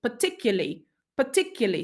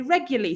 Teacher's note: want to shorten it a lot of people say particularly particularly so they skip a whole syllable